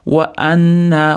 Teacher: Wa-nna bo'lib ketmasin, wa-anna. A ni alohida aytamiz, nun ni ushlab turamiz g'unna qilib. Wa-anna. Mana alifni ham cho'zamiz.